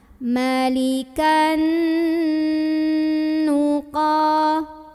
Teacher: tanwin fathahnya ini lebur dengan huruf nun atau masuk ya, sambil dengung dulu, masuk dengan dengung, tahan. Malikan nuqa, Qa mad tabi'i karena ada alif sebelumnya fathah, maka cara membunyikan qafnya ini dipanjangkan 2 harokat. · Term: idgham bi gunnah